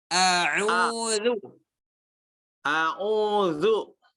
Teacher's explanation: Coba jangan a'u itu dari hidung tuh.